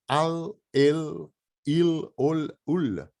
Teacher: O L é sempre palatal, ele vai bater no céu da boca